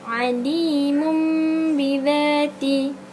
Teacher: sebutan hendaklah didengungkan dengan merapatkan dua bibir sehingga berubah menjadi mim yang ringan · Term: iqlab